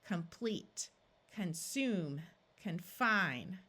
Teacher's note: In all of these words, in the first 2 columns, we have a prefix of com or con. Since prefixes are rarely accented in English, these O's are going to tend to schwa and sound more like a short U rather than a clear ah sound.